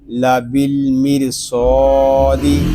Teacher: صاد یہ حروف مستعلیہ میں سے ہے، اس کو پوری یعنی موٹا پڑھیں گے